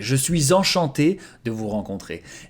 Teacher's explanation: Here, don't forget the liaison. So because suis ends with an S, you have to make a Z sound before enchanté